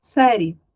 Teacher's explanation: E na ausência do A, na ausência do A, eu tenho o I como semivogal e o E como vogal. Porque se o A é 24 horas vogal, quando eu não tenho A, a outra vogal que tiver, ela vai fazer às vezes de vogal. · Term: ditongo crescente